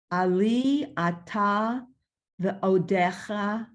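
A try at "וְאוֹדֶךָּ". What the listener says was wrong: And so when it has a dot, it's ha, not cha. Ha.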